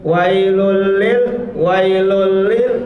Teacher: sini bunyi n pada wailun karena apa domain bertemu dengan lam jadi dilebur tapi tidak menggunakan dengung